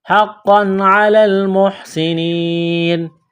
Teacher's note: تنوین کے بعد عین ہے، حروف حلقی ہے تو تنوین پر غنہ نہیں کریں گے، آواز ناک میں نہیں چھپائیں گے